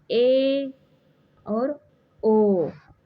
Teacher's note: अर्ध संवृत यानी half close जिसमें मुख द्वार लगभग आधा बंद रहता है। उसे अर्ध संवृत कहते हैं।